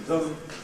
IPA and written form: ðəm (them)